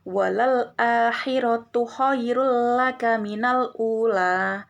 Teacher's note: arti dari bilunah sendiri adalah tidak dengan dengung sehingga pengertian darunahalah memasukkan atau mentasdidkan huruf dan membacanya dengan tidak boleh menggunakan dengungan